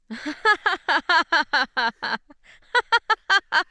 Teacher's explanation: different kind of laugh now that's a more communicative laugh and you could probably hear it was lower in pitch it has a sort of nasality into it it was shorter